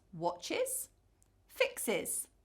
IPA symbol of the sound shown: ɪz